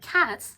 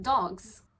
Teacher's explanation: sometimes the ending in the plural could be a hissing sound like cats, and sometimes it's a buzzing sound like dogs.